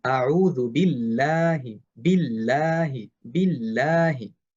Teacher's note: কারণ হচ্ছে পূর্ববর্তী হরফে জের আসছে। যদি এই লাফজুল জালালা এর পূর্ববর্তী হরফে জের আসে তাহলে আমরা এই লাফজুল জালালা তথা আল্লাহ শব্দটাকে পাতলা করে পড়ব।